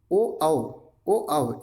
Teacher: इनका जो है उच्चारण स्थान कंठोष्ठ है